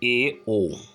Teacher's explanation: इसमें बंद से कुछ अधिक खुलता है, और ये स्वर हैं ए ओ। मुख द्वार बहुत थोड़ा सा खुलता है। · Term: अर्ध समृत स्वर